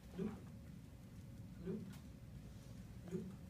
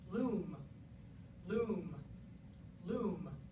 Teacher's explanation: Well, we write them both as long vowels, but in fact, when you make them, if we look at the actual amount of time you produce them, the one in loom is actually much longer. And that's because it's coming before a sound that has vocal folds vibrating, whereas loop is not. So I have to shut off my vocal folds so I don't vibrate them before I make the last sound in the word, and it makes the vowel shorter.